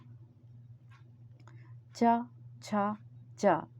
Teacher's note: जीभ के किनारे के दोनों हिस्से अगर ऊपर जाकर तालु में टच हो रहे हैं तो उनको तालव्य कहा जाता है।